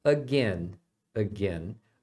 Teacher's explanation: o ai tem o som de e tá como se fosse a letra e do português mesmo